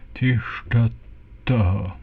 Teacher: Both the S and the TH here are retroflex.